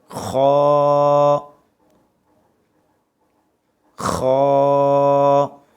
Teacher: اس کو موٹی آواز میں پڑھنا چاہیے ہمیشہ، ہر حالت میں پریانی موٹی آواز میں پڑھیں گے، حلق کے اوپر سے ادا کریں گے